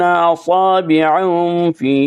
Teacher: لمبا کریں گے کیونکہ فی کے اوپر یا کے اوپر مد ہے، مد منفصل ہے